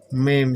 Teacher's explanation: Mim itu karena mulut tertutup sehingga udara mau keluar nggak bisa, akhirnya naik lewat hidung. Mim, sehingga kalau kita tutup hidung kita nggak bisa bunyi mim, nggak bisa bunyi mim. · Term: huruf mim